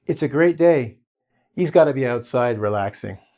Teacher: Commonly or regularly used, or speaking really, really quickly, we'll delete the h.